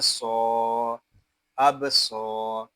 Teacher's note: صاد یہ حروف مستعلیہ میں سے ہے، اس کو پر پڑھیں گے اور یہاں الف مدہ بھی ہو رہا ہے اور صاد کو ایک الف تک کھینچ کر پڑھیں گے.